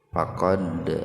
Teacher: huruf Dal yang sukun yang mati di tengah-tengah kalimat jadi dipantulkan ya diqolqolahkan Secara ringan faqod n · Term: Qalqalah sugro, qalqalah sugro